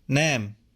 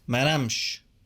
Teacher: The sh suffix at the end shortens the long a vowel that comes before it.